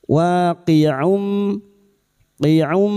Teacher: wa fathah bertemu alif dua harakat mad thabi'i